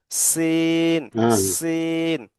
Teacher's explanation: সিনটি একটু সিটির মত আওয়াজ সিটির মত